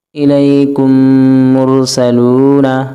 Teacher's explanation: میم ساکن کے بعد میم آ رہا ہے تو ہم غنہ کریں گے۔ یہ ساکن ہے، یہ میم ہے، میم ساکن کے بعد میم آ رہا ہے۔ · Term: ادغام شفوی